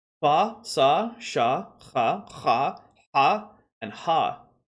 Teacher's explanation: in all the same points of articulation, we have a fricative series